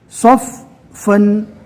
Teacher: پہلے والے حرف سے ملانا ہے، 2 بار پڑھنا ہے فا کو، اور طاقت سے پڑھنا ہے